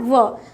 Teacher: ठीक है, और दंतोष्ठ, यानी कि दंत और ओष्ठ दोनों से बोले जाने वाले वर्ण जो है व है